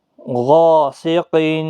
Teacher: دیکھو حروف مستعلیہ کا غائن اس کے ساتھ الف یہ بھی پر پڑھا جائے گا۔ غاسقین، قاف بھی مستعلیہ ہے، پر پڑھا جائے گا۔